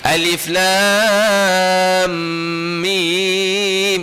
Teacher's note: Nampak kita tak ada dengung itu sepatutnya mesti alif lam dia. M tu kena panjang kadar dua tiga harakat. Jangan terus lalu. · Sebelum melepaskan huruf mim tu, kena kadar dengung itu, idgham ataupun ikhfa, kadar tu ia panjang sikit.